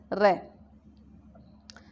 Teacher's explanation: जीभ जो है पहले टकराती है और फिर जो है कांपती हुई सी या लुढ़कती हुई सी लगती है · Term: लुंठित या प्रकंपित वर्ण